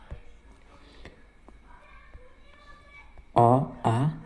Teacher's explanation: पहला कंठ स्वर गले से निकलने वाले स्वर